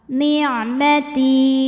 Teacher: Karena ada ya sukun yang sebelumnya berbaris kasrah maka huruf ta kita panjangkan dua harakat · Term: mad thobi'i